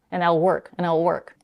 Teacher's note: And then also she's dropping the d sound at the end of the word and.